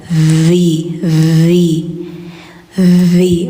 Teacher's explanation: lidah ujung tempel gigi atas